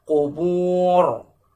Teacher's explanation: Ra-nya tetap diucapkan dengan tebal dalam kondisi mulut tetap membulat. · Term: tafkhim